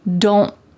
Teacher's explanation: My tongue is at the top of my mouth, like it's going to make that T shape, but I just don't let the air come out.